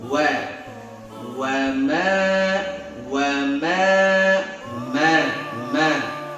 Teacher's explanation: Ma nempel saja, tidak ditekan dia ya, bukan huruf asyiddah, jangan ma.